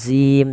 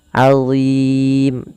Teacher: Azim, Allah tidak dibaca dengan zim tapi azim, tebal huruf dha-nya, pangkal lidah kita terangkat. Allah, ujung lidahnya sebagaimana zal, azim.